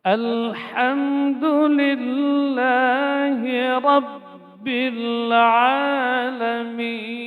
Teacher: huruf ha. Di mana dia keluar di tengah tenggorokan.